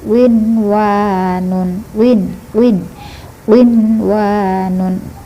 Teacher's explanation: walaupun dibaca kasrah dia harus macucu. Bibir kita harus macucu.